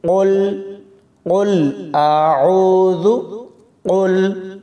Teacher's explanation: قل اعوذ برب الفلق، قاف لام پیش قل، قاف کو موٹا پڑھیں گے، دو نقطوں والا قاف ہے، کتاب والا قاف نہیں ہے، اس کو باریک نہیں پڑھنا، اس کو موٹا پڑھیں گے۔ قاف کو لام کے ساتھ ملاتے ہوئے کلکلا نہیں کریں گے، آواز کو کھلا نہیں چھوڑنا۔ جیسے ہی قاف کو لام کے ساتھ ملاتے ہوئے لام کی آواز آئے تو آپ نے اپنی آواز کو پکڑ لینا ہے۔